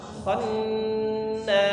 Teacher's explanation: coba kita kho tipis. Jangan tebal dia tapi jangan terlalu ngorok ya.